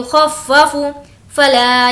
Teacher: یو کو نہیں کھینچیں گے کیونکہ یہ واولین ہے